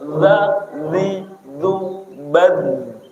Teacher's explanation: Dza itu ujung lidah menempati ujung gigi atas.